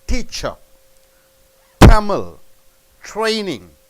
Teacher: T in the beginning of the letter, the sound pops up, sound comes up